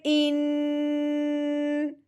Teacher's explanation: جو ناک میں آواز جا رہی ہے کر کے، یہ غنہ ہے